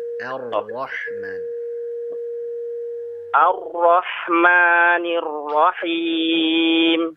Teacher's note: Untuk huruf ro-nya tadi ar-ro, getarannya sedikit diharuskan.